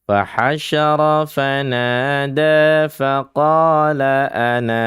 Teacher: Kita berhenti di ananya, dipanjangkan 2 harokat. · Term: sifru mustatil